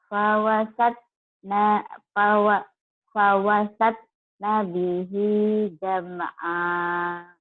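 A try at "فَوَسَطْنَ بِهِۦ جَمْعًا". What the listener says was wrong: Nah ini to-nya qalqalah. Jadi bacanya gini, fawasata, fawasata, fawasatna bihi jam'a. Coba lagi qalah-qalahnya, qalqalah. Nanya pendek. Fawasatna bihi jam'a.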